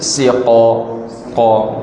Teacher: Qaf adalah huruf yang tebal, huruf isti'la. Jadi udara keluar bibir bawah ni agak tertahan sedikit, udara naik ke atas.